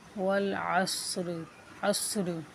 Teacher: صاد موٹا ہے، اس کو موٹا یعنی پر کر کے پڑھیں گے، ٹھیک ہے، اور را کو ساکن کریں گے وقت کی صورت میں